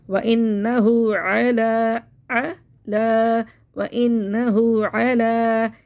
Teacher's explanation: लाम को मोटा नहीं करना